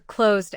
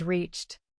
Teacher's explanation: Closed ends with voiced z, so use d. Reached ends with voiceless ch, so use t.